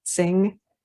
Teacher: you should feel your tongue tip and your whole back of your tongue pulling back